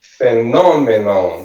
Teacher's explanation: so the non é a sílaba tônica, is the stress syllable. Então, eu sempre preciso falar ela mais forte.